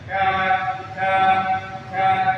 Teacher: Ya, kalau qaf itu lidah pangkal lidah paling belakang, depannya itu huruf kaf ya, depannya. Jadi tetap langit-langit pangkal lidah menyentuh langit-langit cuman dia lebih ke depan daripada qaf.